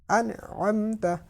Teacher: اب یہ عین جو ہے اس کو حلق کے درمیان سے نکالا